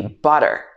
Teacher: So for example, butter in Southern British accent, butter, So in American English pronunciation, this would be butter. This t sound would change to a d sound.